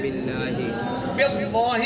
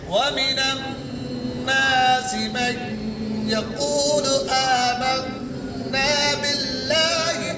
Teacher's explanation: लफ्ज अल्लाह से पहले जेर है तो बारीक हो जाएगा